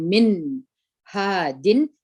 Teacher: موږ تاسې چې نون اظهار کوو، نون مکمل وایو، ژبه مو د تالو سره موښلي او د نون اواز خامخا یو څه په پزې ته ځي، لکه موږ تاسې وایو من هادین، مګر دلته به نه غوڼه ورکوو او نه به ازانګه وکړو.